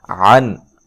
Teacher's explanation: عین کو واضح نکالنا ہے، نون ساکن کا اظہار ہے، یہاں غنہ نہیں کیا جائے گا